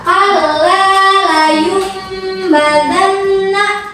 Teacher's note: nunnya diganti, enggak dibaca nun tapi dibaca ma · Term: iqlab